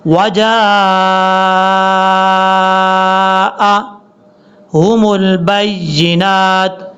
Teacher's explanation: جیم کے بعد الف ہے، الف کے اوپر مد ہے، اس مد کو لمبا کریں گے. یہ مد متصل ہے، 2 سے 2.5 الف کے برابر آپ نے لمبا کرنا ہے.